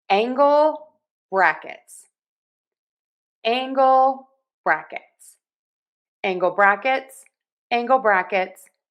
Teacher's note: angle is getting more of the stress here with angle brackets.